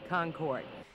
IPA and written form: ˈkɒŋkɔrd (Concorde)